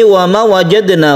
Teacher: Wa ma ini adalah mat asli atau mat tabi'i, ada alif sebelumnya ada fathah, maka kita panjangkan satu alif atau dua harokat. Kemudian wajadna ini ada sukun dal yang ada di tengah-tengah kata yang kita namakan qalqalah sughra, kita pantulkan wajadna.